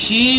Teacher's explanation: शी जब आप पढ़ते हैं इसमें सिफत तफशी है। यानी मुंह के अंदर आवाज का फैलना जब आप ये गैप खत्म करेंगे तो आपको घुटी सी आवाज महसूस होगी।